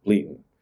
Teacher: replacing the d in words like bleeding with a glottal stop